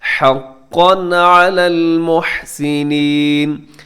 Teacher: وہاں پہ اظہار کر دیتے ہیں، مطلب تنوین کو یہاں پہ غنہ نہیں کرتے، اس کو تیزی کے ساتھ پڑھ دیتے ہیں۔